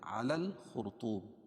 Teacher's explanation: را ساکن سے پہلے پیش ہو تو را پر ہوتی ہے، اس کو موٹا پڑھتے ہیں